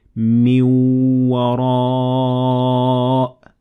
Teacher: The second example, أو من وراء جدر. So here we fused or merged between min, so the noon in min, and the waw, and it will be من وراء.